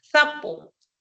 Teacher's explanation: es cuando todo se pronuncia con la fricativa interdental